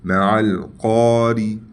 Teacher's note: را کو باریک پڑھیں گے، ٹھیک ہے، اور قاف کو موٹا